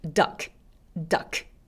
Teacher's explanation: 덕처럼 받침이 있지 않고요. K 소리를 하나 살려주셔야 돼요. 그래서 마지막까지 duck 이렇게 소리 내주세요.